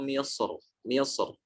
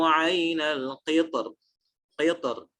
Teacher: dia memilih tafkhim pada kata Misr ketika berhenti pada kata Misr dan tarqiq pada kata Al-Qitr dalam surat Saba